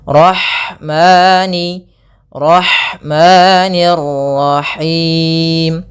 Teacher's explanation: alirkan nafasnya pada lafal ha karena di sini ada hukum tajwid berupa ada sifat huruf ha yang itu sifat hamas, mengalirnya nafas.